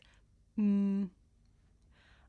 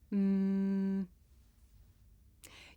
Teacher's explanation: my lips and letting the sound come through my nose um I can even feel my nose vibrating